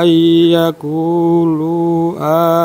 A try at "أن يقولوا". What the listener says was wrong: Lu-nya apa yang? Lu-nya kan majais. Antara ku dengan lu panjangnya beda.